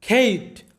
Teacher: মানে সঠিক উচ্চারণটা হয় ক এবং খ এর মাঝামাঝি উচ্চারণটা। তো এখানে দেখো সি এর পরে এই, তাই এখানে সি এর উচ্চারণটা ক এর মতো হবে।